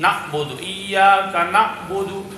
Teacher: حمزہ پڑھتے ہیں بعض لوگ، نعبد، ایاک نعبد، بدل دیا حرف، عین کی جگہ حمزہ کر دیا